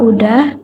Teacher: terjadi penghilangan fonem konsonan S pada kata sudah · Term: gejala elisi